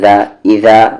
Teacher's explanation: ذال کا مخرج سامنے والے دانت کا کارنر اور زبان کا کارنر